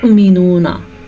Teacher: یہ ہے مینونا، واو نہیں پڑھیں گے، اس کو ہم حمزہ کا ساکن جھٹکے کے ساتھ پڑھا جائے گا